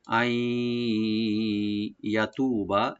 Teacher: নুন সাকিন এখানে ইয়ার সাথে মিলে আমরা এদগাম উইথ গুন্না করবো এখানে, নুনটা ইয়ার সাথে সংযোগ হয়ে যাবে গুন্না সহকারে। আই ইয়াতু বা ইয়াটাকে ওপেন রাখবেন, তু একালে টানবেন, বাতে টান নাই।